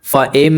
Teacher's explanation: تھوڑی دیر آواز کو کھینچیں گے، ناک میں تھوڑی دیر آواز کو روکیں گے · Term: غنہ